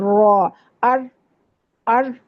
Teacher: سامنے والے 4 دانتوں کے مسوڑوں سے لگائیں گے تو را ادا ہوگا